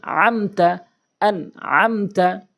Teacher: এই মিম সাকিনের পরে এই মিম সাকিনের পরে দেখতে পান তাহলে এই মিম সাকিনকে আপনি কখনোই গুন্না করতে পারবেন না স্পষ্ট করে উচ্চারণ করতে হবে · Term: ইজহারে শাফি